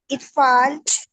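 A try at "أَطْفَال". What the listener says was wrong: طفال کہہ رہی ہیں؟ اچھا وہ اطفال ہے، ٹھیک ہے، الف پہ زبر آتی ہے. اچھا اطفال حمزہ پہ زبر آتی ہے. اطفال، ٹھیک ہے.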